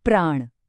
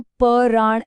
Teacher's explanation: इसमें जो प्र की आवाज है वो असल में दो ध्वनियों का मेल है। प और र। यह दोनों अलग व्यंजन हैं। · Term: संयुक्त ध्वनि